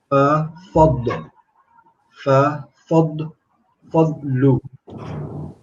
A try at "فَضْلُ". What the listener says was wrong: So, because you're learning Quran, etc. just remember there's no qalqala on a dad. So you're not going to say fadlu. Fadlu.